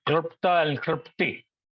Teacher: That L sound is a L pronounced without touching the teeth.